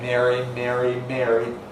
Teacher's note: not only <Mary> and <merry> but also <marry>, ‘get wed’, become the same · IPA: /ˈmeri/